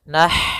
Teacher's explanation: Kemudian ma ada mad tabi'i, innama nah di sini ada huruf ha sukun, yaitu ha yang memiliki sifat hamas, maka alirkan dulu nafasnya